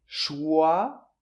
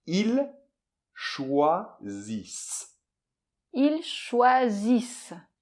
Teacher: il n'y a qu'un seul S entre deux voyelles, donc ça doit être un S sonore, zzz, comme l'abeille.